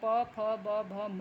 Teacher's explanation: ओठों का इस्तेमाल करके बोलने की वजह से इसे ओष्ठ कहते हैं। इसका स्वर में ऊ, छोटा ऊ और बड़ा ऊ है, जिसमें स्पर्श में प, फ, ब, भ, म है।